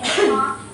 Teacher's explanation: So, it's aspirated in the initial position and in stressed syllable, and aspirated in some consonant combinations like as in talk. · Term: the American T